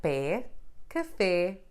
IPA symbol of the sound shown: ɛ